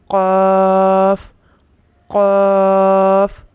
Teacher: اس کا مخرج ہے زبان کی جڑ اور تالو کا نرم حصہ۔ پیچھے ہمارے جو زبان کی جڑ ہے، جب وہ تالو کے نرم حصے سے ٹکراتی ہے تو قاف قاف یہ ادا ہوتا ہے۔ · پیچھے ہمارے جو زبان کی جڑ ہے، جب وہ تالو کے نرم حصے سے ٹکراتی ہے تو قاف قاف یہ ادا ہوتا ہے۔ قاف آپ نے پیچھے جیسے پڑھا ہے حروف مستعلیہ میں سے ہے، اس کو پر پڑھا جاتا ہے۔ اس کے علاوہ قاف حروف قلقلہ میں بھی شامل ہے۔